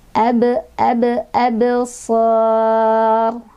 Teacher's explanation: Ro-nya tebal ya, sor, karena sebelumnya barisnya fathah